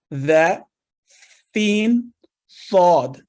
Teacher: इन हरूफ की अदायगी के वक्त हल्की सी सीटी की आवाज आती है। जिन हरूफ में ये सिफत पाई जाती है उन्हें हरूफ सफीर कहते हैं।